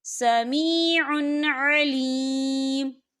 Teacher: واللہ سمیع علیم، سمیع علیم، یا دیکھیں سمیع، عین کے اوپر تنوین ہے اور تنوین کے بعد پھر عین آ رہا ہے، اور عین جو ہے حروف ہلکی کا ورڈ ہے، تو ہم یہاں اظہار کریں گے اور ہم اسے بنا غننے کے پڑھیں گے